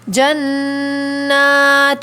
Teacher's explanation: جنات کے اندر نون کو کھینچیں گے بھی اور غنہ بھی کریں گے